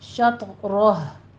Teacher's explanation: दोनों होंठ इस गोल करेंगे तो फिर आपका सही अदा होगा, वरना आपने वजूहकुम ही पढ़ जाना है, इसलिए इसको अंडरलाइन कर लीजिए। शत्रह, आखिर पे अगर आपने वक्फ मुतलक किया है तो फिर आपने हाँ की आवाज़ लाजिम निकालनी है